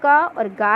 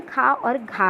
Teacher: अल्प प्राण व्यंजन क और गा है। महाप्राण व्यंजन खा और घा है।